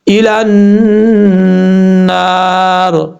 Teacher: اب یہاں پر لام کو جب نون سے ملائیں گے تو بیچ میں یا ہے، الف ہے، پھر لام ہے، ان تینوں حرف کو چھوڑ دیں گے اور یہاں پہ نون کے اوپر شدہ غنہ کریں گے ایک الف کی مقدار، اور یہاں پر جب وقف کریں گے تو را ساکن ہو جائے گا، آگے را سے پہلے الف ہے، الف مدہ ایک الف کی مقدار لمبا کر کے پڑھیں گے۔